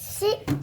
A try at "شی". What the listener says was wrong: شین ابھی رہ گئی. شی.